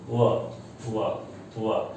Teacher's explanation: व देखिए दांत और ओठ को बड़े आराम से ये टच करता है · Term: दंतोष्ठ